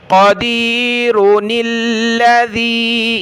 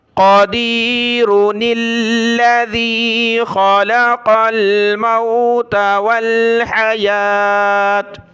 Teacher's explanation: آپ نون کو آگے لام کے ساتھ ملائیں گے تو یہ خالی الف ختم ہو جائے گا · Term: ملا کر پڑھنے والی